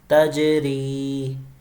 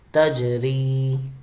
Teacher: ری کو ہم کھینچ رہے ہیں یا مدہ ہونے کی بنا پہ، اور تج کے اوپر ہم قلقلہ کر رہے ہیں، تجری۔ · اب یہاں بھی آپ دیکھیں تج اور ری، ری کو ہم کھینچ رہے ہیں یا مدہ ہونے کی بنا پہ، اور تج کے اوپر ہم قلقلہ کر رہے ہیں